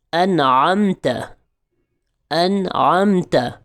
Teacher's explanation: نون ساکن اور نون تنوین کے بعد حروف حلقی میں سے، یعنی 6 لیٹرز میں سے کوئی بھی ایک حرف آ جائے تو اظہار کر کے پڑھتے ہیں، یعنی کہ نون ساکن اور نون تنوین کو خوب ظاہر کر کے غنہ نہیں کریں گے، بغیر غنے کے پڑھا جائے گا